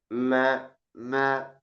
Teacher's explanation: Jadi sambil mengatupkan kedua bibir, ada juga yang bagian ke hidungnya. Ada gunnahnya dari hidung. · jadi dua makhrajnya, satu di bibir, satu di khaysyu. Satu di syafatan, satu di khaysyu. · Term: mim